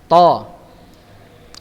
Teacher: Sedangkan huruf to ini punggung ujung lidah, jadi agak mundur dia ke belakang.